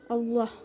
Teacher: Lalu ada huruf ba yaitu qalqalah kubra karena hurufnya itu berada di akhir kalimat sehingga diwaqafkan dan dibaca secara memantul. Allah Lafaz Allah didahului dengan huruf berharokat fathah, dibacanya secara tebal. Itu hukumnya tafkhim.